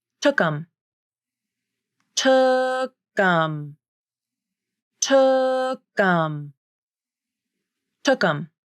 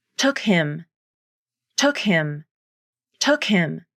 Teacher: She reduced the word “him” to “um” by deleting the initial /h/ consonant and reducing the vowel to the schwa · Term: Pronoun reductions